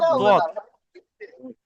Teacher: জিহব্বার পার্শ্ব ও পার্শ্ববর্তী মাড়ি হতে দদ উচ্চারিত হয়